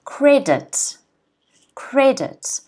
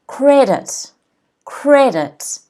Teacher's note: the first syllable has an apostrophe before it that means that the first syllable is stressed